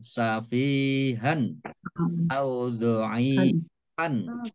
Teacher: Fathah tanwin bertemu dengan huruf alif bacaan izhar dibaca jelas